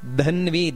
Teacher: ಧ ಅನ್ನೋದು ಮಹಾಪ್ರಾಣ ಇದೆ ಹಾಗೆಯೇ ಧನ್ವಿ ಅಲ್ಲಿ ದೀರ್ಘ ಇದೆ